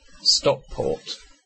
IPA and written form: ˈstɒkpɔːt (Stockport)